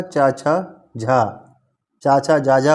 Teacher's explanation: चा, छा, जा, झा, वहाँ, ये तालव्य व्यंजन कहलाते हैं